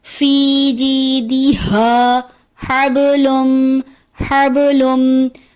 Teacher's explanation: ہا کی ادائیگی کی جگہ عموماً دوسرے ہا کی ادائیگی ہو جاتی ہے جو حلق کے درمیان سے ادا ہوتا ہے، جو کہ درست نہیں، اس کو پڑھ دیا جاتا ہے فی جیدہا، جو درست نہیں، درست ادائیگی ہے فی جیدہا حبلم حبلم۔